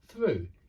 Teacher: you don't ring your vocal cords at the start with through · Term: voiceless th